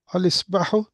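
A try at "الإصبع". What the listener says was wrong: You're literally pronouncing the alif. Al-Isba'u. That's Qamariya.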